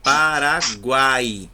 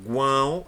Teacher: a gente já vê o som saindo também parte pelo nariz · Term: nasais